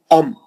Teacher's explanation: دونوں ہونٹوں کا سختی سے مل جانا، وہی اس کا مخرج ہے. ام. اب جو ہے بہت ہلکا ملتے ہونٹ جو ہے ہلکے ملتے با میں، لیکن میم میں سختی سے ملتے ذرا.